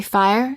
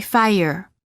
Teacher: the vowel often changes when the r follows it there is a slight uh sound that is added after certain vowels making it sound almost as if the word contains an extra syllable